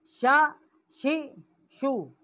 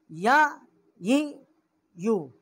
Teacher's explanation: جیم، شین اور یا جو ہے، ان تینوں کا مخرج جو ہے وسط زبان اور اوپر کا تالو ہے